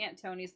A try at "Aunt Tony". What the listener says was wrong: No, the way you're saying his name sounds like aunt, like your aunt, Aunt Tony. Anthony. Anthony.